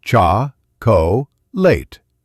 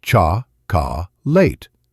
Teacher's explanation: In English, we say chocolate with the stress on the first syllable. Cha late. The other syllables are small and fast.